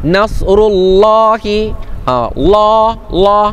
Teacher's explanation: tafkhim Allah dibaca dengan tebal